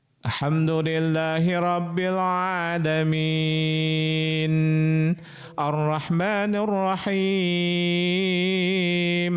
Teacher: ketika membaca nun mati di akhir itu suka ada H gitu. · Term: sifat huruf tawas